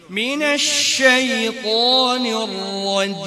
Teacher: জিম বলার সময় বাতাস বের করে ফেলি, হ্যাঁ জিমে বাতাস বের হবে না